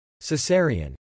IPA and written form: sɪˈzɛər i ən (Cesarian)